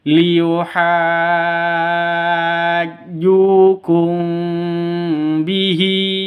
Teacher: Ikhfa safawi itu dengung, samar didengungkan, siap-siap ke huruf ba-nya.